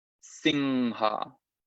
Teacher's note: Entonces aquí hay una M con un puntito arriba. Eso es anuswara, un sonido específico del sánscrito, que se pronuncia nasalizando la vocal anterior. Entonces en este caso, esa I se va a convertir en una ing, singha.